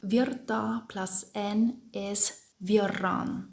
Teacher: Now we want to say of the electricity, so that means we have to take the genitive marker N, and we have virta plus N is virran, which means of the electricity. So what happened here? The RT changes to a double R